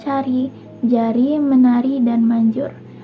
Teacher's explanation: konsonan hambat palatal, itu mencakup huruf C dan J